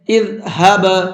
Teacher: اس لیے با کے اندر ہلکا سا آواز کو ڈبل کر کے پڑھیں گے، اسی کو قلقلہ کہا جاتا ہے۔